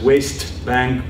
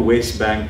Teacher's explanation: can be grammatically pronounced in english as west bank with the t or west bank without the t right so it's a variable phenomenon they're both grammatically acceptable in